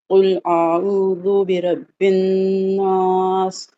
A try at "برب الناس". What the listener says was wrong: برب الناس، را کو ذرا موٹا کر کے، برب الناس ایسے